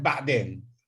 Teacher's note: it has this voiced pharyngeal fricative